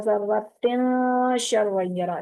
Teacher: तन्वीन का नून जो है ना वो नाक में छुप जाएगा, इख्फा हो जाएगा उसका